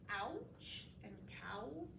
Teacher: a sliding vowel. So your mouth makes two different sounds while making it. Um The first sound is the sound that we're going to go through as in ouch and cow.